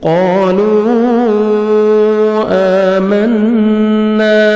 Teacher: قالوا آمنا حمزہ کھڑا زبر، 1 سیکنڈ کھینچنا ہے، نون مشدد غنہ کریں گے، نوز میں ساؤنڈ لے کے جائیں گے